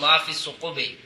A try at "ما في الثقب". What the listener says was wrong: بس ثقب، ثقب جمع نہیں، ثقب ما فی ثقب، ثقب۔ اچھا جی، مسئلہ برف کے اندر سوراخ کر دیا، برف جمی تھی اوپر سے کیا کر دیا، لیکن وہ جو سوراخ کیا ہے وہ اشر فی اشر سے کم ہے۔ اگر اشر فی اشر کے